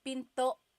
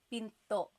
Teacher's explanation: Do you hear the glottal stop when I say pinto?